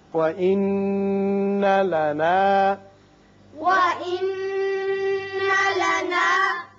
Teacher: نون مشدد ہے، غنہ کریں گے.